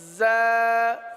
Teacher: اس حرف کو ایک الف تک کھینچ کر پڑھیں گے